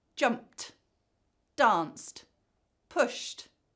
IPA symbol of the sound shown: t